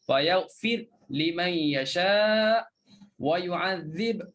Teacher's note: Fayaghfir, matikan huruf ra, bacaan Ibnu Katsir dia baca dengan matikan ra, fayaghfir di sinilah.